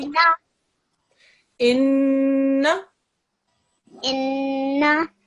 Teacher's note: Do the n sound for 2 seconds